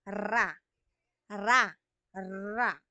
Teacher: yung pakatal naman may tunog pakatal ibig sabihin parang may vibration mangyayari may tunog ra ra ra Okay ung dila natin parang nagba-vibrate